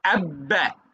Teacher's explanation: দুই ঠোঁটের ভিজা জায়গায় তো উচ্চারণ হবে